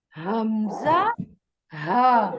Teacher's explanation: حمزہ اور ہا یہ دونوں حروف حلق کے نیچے والے حصے سے ادا ہوتے ہیں